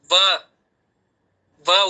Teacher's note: ಹಲ್ಲು ತುಟಿ ಹಲ್ಲು ತುಟಿ ಎರಡು ಟಚ್ ಆಗುತ್ತೆ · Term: ದಂತ್ಯ ಉಪ ಓಷ್ಟ